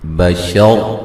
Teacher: را کو موٹا ادا کریں گے، وقفاً وصلاً را کو موٹا ادا کیا جائے گا